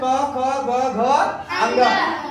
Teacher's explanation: क्योंकि इनके बोलने पे हमारी जो ध्वनि होती है वो कंठ से निकलती है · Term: कंठ व्यंजन